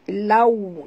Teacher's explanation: lau muncungkan mulut, lau, kerana waw sifatnya lin, lembut ya